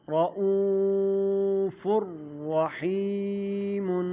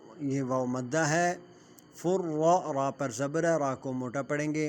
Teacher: یہ واو مدہ ہے، را پر زبر ہے، را کو موٹا پڑھیں گے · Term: را موٹا ہوگا